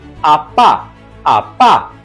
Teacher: a palavra pá, que é um substantivo, é pronunciada com maior força expiratória e por isso ela é uma monossílaba tônica.